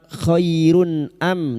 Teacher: Sekarang ji kita wasal atau terus kita uraikan pada kalimat khairun am duma tanwin bertemu hamzah idhar halqi. Duma tanwin dibaca jelas tanpa mendengung.